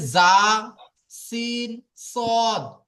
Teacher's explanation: জিভের আগা তা সামনের উপরের তা ও নিচের, সামনের তা উপরের নিচের দুই জ দাঁতের আগার সাথে জাল লাগিয়ে উচ্চারিত হবে জা, সিন, সদ। জিভের আগা সামনের উপরের দুটো দাঁতের আগা এবং সামনের নিচের দুটো দাঁতের আগা, টোটাল ওপরে দুটো নিচে দুটো, চারটে দাঁতের আগা, তার সাথে জিভের আগা একত্রিত হয়ে উচ্চারিত হবে জা, সিন, সদ।